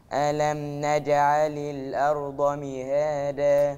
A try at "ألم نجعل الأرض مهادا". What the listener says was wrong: عشان أميز ما بين الدال وما بين الضاد، دي لغة الضاد اللغة العربية. فإيه اللي بيميز ؟ المخرج بتاع الحرف. لو قلت الأرض يبقى أنا نطقت دال ما نطقتش ضاد.